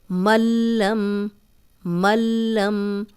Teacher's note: ملم، ملم، اب جب بھی لام اور را آئے گا تو اس پہ شد ہوگی، اور جب شد ہوگی تو ہم زبر زیر پیش والا حرف جو ہے وہ شد کے ساتھ ملائیں گے، تنوین کی ایک زبر بھی ختم ہو جائے گی اور نون بھی ختم ہو جائے گا